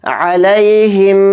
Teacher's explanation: میم کے اوپر تشدید آ رہی ہے تو میم میں غنہ کریں گے